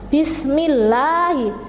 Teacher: Yaitu dibaca tipis. Jadi apabila lafadz Allah didahului oleh harokat kasroh, maka membacanya harus tipis